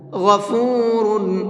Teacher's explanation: غین کو بھی پر کر کے پڑھیں گے